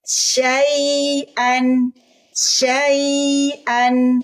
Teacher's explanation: Syai, ya sukun bunyinya i. Di huruf ya ada rohwah, mengalir suara. Suara yang dialirkan suara i.